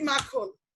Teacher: তাহলে আমি প্রথম বর্ণতে একটু জোর দিচ্ছি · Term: শ্বাসাঘাত